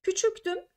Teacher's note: idim derken i ünlüsü düşüyor D t'ye dönüşüyor ünsüz benzeşmesi var